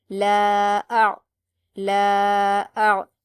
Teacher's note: حمزہ پر حرکت ہے اور عین پر جزم ہے تو حمزہ کو عین سے ملائیں گے، لیکن عین کو قلقلہ نہیں کریں گے